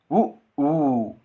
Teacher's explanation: இதழ்களை குவிப்பதால் பிறக்கும் எழுத்துக்கள்